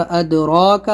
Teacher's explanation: अद पे क़लक़ला करना है, मत खींचना है